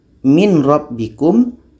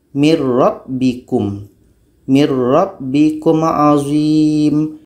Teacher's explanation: bunyi Nun sudah masuk kepada ro maka itu disebut dengan Idam Kamil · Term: idgham kamil